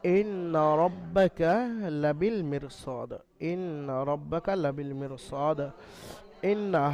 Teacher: নুন মুশাদ্দাদ হওয়ার কারণে গুন্না করা ওয়াজিব, এখানে নুনকে একালিফ পরিমাণ ওয়াজিব গুন্না করতেই হবে